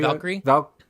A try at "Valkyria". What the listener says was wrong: It's ends with an A though. Valkyria